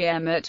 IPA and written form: ˈɛmɪt (Emmet)